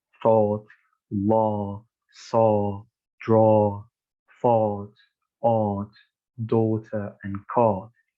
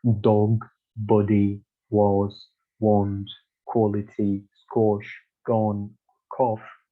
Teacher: thought vowel is like a lengthened version of the lot vowel